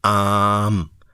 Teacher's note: اس کو تقریباً 3 گنا لمبا کر کے آپ نے میم کے ساتھ ملا دیا